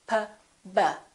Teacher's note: P and B, have the same point of articulation because both of them require the lips to close